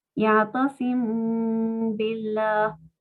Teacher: Pronunciándola por la nariz. Termina sonando un sonido de mim muy tímido. No es muy claro la pronunciación de la mim. · Está sucediendo lo mismo, en este caso hay que aplicar ikhfa, así que cuando pronuncie la mim, tengo que pronunciarla por la nariz y ojalá también insistir 2 tiempos.